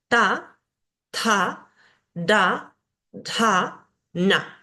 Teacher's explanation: los sonidos cerebrales tienen puntito debajo Por ende la lengua tiene que ir hacia arriba hacia el paladar